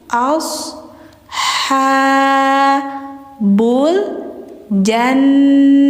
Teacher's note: Jadi jangan as tapi asa bul jannah. Tahan. Dengungkan dulu gunah musyaddadah hukumnya. Baru bunyi ha. Nah, ini ta bulat ketika mati jadi ha ya.